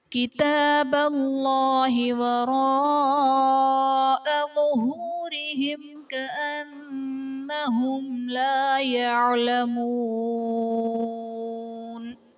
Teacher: ظہورہم کأنہم میں میم ساکن کے بعد حرف با اور میم کے علاوہ کاف آ رہا ہے تو یہاں پر اظہار شفوی کا قاعدہ ہوگا، یعنی میم ساکن میں ہم غنہ نہیں کریں گے · کتاب اللہ میں اسم جلالت اللہ عز و جل کے لام سے پہلے حرف پر زبر ہے تو یہاں پر اسم جلالت اللہ عز و جل کے لام کو پر یعنی موٹا پڑھا جائے گا